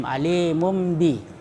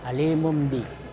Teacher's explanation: Cara membacanya dengan menyuarakan nun mati atau tanwin menjadi suara mim. Ya, dibalik dari tanwin menjadi mim, alimum bi. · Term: iklab